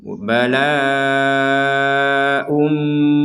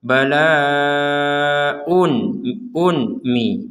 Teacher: ya kita masukkan tanwinnya kepada mim plus dengung. Bala ummi, jadi dimasukkan.